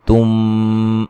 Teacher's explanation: میم ساکن کا اخفا ہے، غنے کے ساتھ پڑھیں گے